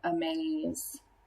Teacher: if i were thinking about sorting the word amazed the accented syllable is the second one